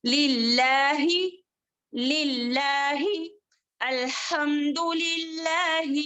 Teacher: للہ، اس کو باریک پڑھیں گے. لفظ جلالہ یہاں پر اللہ کے لام جو ہے باریک دیا گیا ہے، اس کو باریک پڑھیں گے.